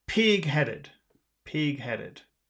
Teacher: you always put the emphasis on the first word